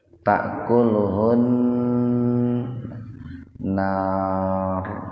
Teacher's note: Kalau mau berhenti di situ, itu ro-nya dibaca tebal gitu, dan dibaca sukun juga. Ro-nya dibaca tafhim.